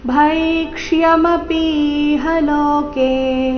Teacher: ಭೈಕ್ಷ್ಯ ಅರ್ಧ ಅಕ್ಷರ ಪೂರ್ತಿಯ ಯ ಸ್ಪಷ್ಟವಾಗಿ ಕೇಳಿಸಬೇಕು